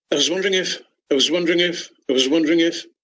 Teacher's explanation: reduce the vowel there in the word was and make it into this schwa sound